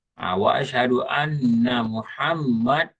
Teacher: nun sabdu, dengung, mim sabdu, dengung, itu nama dia wajibul gunnah